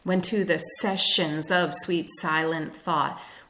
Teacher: the heavy repetition of the s sound which could also be called sibilance as well as alliteration